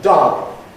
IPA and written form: dʌl (dull)